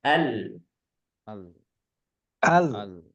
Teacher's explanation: lam itu punya sifat bainah atau Ee tidak terlalu mengalir dan juga tidak terhenti sama sekali kita tidak mengatakan Al tidak berhenti tidak tapi alirkan sedikit Al